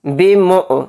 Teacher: यानी हमज़ा पर जज़्म हो, हमज़ा साकिन हो तो झटका लगेगा।